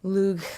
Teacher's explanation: it's similar to the Scottish CH like in Locke but it's a little bit further back in the throat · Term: fricative G